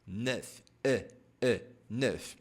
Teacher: E dans l'eau. Se observar bem, você vai notar que a vogal E ela está realmente dentro do O.